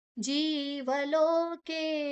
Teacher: ಜೀ ದೀರ್ಘಾಕ್ಷರ ವಲೋಕೆ ವ ಮಾತ್ರ ಹಸ್ವ ಉಳಿದೆಲ್ಲ ದೀರ್ಘ